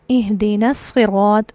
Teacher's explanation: نون direct صاد سے مل جائے گا اور یہ حمزہ حذف ہو جائے گا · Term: حمزہ وصلی